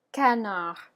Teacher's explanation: as you can hear I'm completely dropping the D